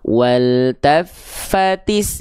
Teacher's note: jadi nggak perlu dipanjang-panjangkan ti-nya, langsung sabat masuk ke tasydidnya. Makanya disebut juga idgham syamsi, karena idgham itu artinya memasukkan langsung ke huruf yang ada tanda tasydidnya.